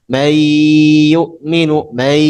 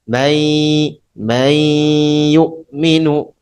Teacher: seharusnya ada sedikit apa sengaunya karena dia justru harus ada sengau ya karena dia ketemu dengan nun sakinah ketemu ya walaupun huruf